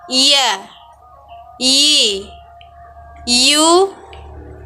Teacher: huruf ya keluar dari tengah lisan disentuhkan dengan langit-langit